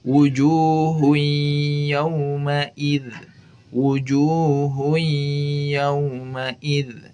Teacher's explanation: makhraj nun sukun hilang dan melebur ke ya, tetapi sifat huruf nunnya masih ada, yaitu sifat gunnahnya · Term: idgham nakis